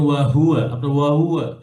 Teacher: হা হরফের আওয়াজ এবং বাতাস দুটোই বের হবে, হামস এবং রখাওয়া দুটোই আছে, হ্যাঁ, তাহলে ওয়াহুয়া যেন ক্লিয়ারলি বের হয়, ওয়াহু যেন অর্ধেক নাকে অর্ধেক মুখে না হয়, যেমন ওয়াহুয়া না, ওয়াহুয়া ইউহাউইরুহু।